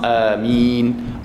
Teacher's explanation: A tu dua. Min tu kita panjangkan sampai enam harakat atau empat harakat atau dua harakat.